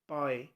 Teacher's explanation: the pronunciation clearly justifies the fact that we are trying to pronounce an A first and then an I at the last. So there are two vowel sounds of first of A, that is A, pa, A, and then next is A, pie. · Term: diphthongs